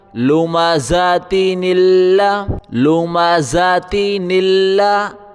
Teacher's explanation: بیچ میں الف ہے، یہ الف نہیں پڑھا جائے گا، نون کو لام کے ساتھ ملائیں، نون لام زیر نل، لام زبر لا، نون لام زیر نل، لام زبر لا، لوما ذاتی نلا، لوما ذاتی نلا۔